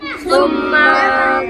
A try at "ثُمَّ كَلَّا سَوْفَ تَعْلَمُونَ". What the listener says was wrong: میم لمبا نہیں کرنا دیکھا میم دوتے صرف زبر ہے ثم كلا